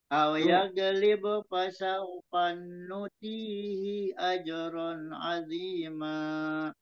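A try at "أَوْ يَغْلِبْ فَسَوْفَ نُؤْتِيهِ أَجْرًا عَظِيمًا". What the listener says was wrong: nu-nya itu hamzah, jadi bukannya dipanjangkan, tapi nu-tihi ajaron. Fasau fanu tihi.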